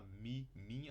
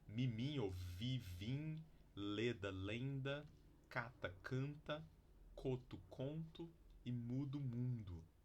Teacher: Pares de palavras que mudam o significado ao mudar simplesmente a vogal de oral para nasal